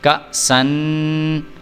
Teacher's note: الف ساکن ہو گیا، اس کو حمزہ جھٹکا دے کے پڑھیں گے۔